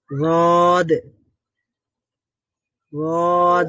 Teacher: জিহ্বার একটা পাশ গিয়ে যে কোনো এক সাইডের দাঁতের গোড়া, উপরের দাঁতের গোড়ার সঙ্গে লাগবে, লেগে হ্যাঁ হ্যাঁ, তারপর উচ্চারণ হবে।